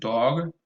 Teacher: it's a half-open back rounded vowel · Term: open all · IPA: ɔ